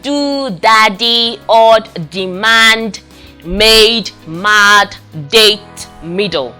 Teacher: this is the voiced aviola stop or plosive made with a tip of the tongue on the alveolar ridge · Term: voiced alveolar stop